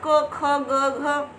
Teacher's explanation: क में ए की साउंड आ रही है